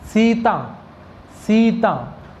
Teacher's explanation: ये जो स है, इस स को बोलते समय आपकी जीभ दांतों के लगनी चाहिए।